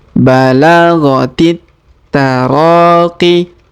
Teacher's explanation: huruf ro kita panjangkan 2 harokat karena di depannya terdapat alif